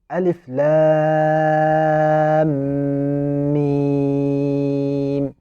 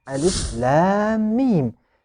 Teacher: So if you find a meme sakina followed by a meme with a vowel, so you should insert the meme sakina into the voweled meme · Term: small merging